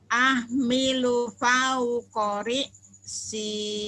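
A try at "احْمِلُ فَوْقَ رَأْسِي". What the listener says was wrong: Roksi, bukan ri si, roksi. Ahmilu fauqa ra'si.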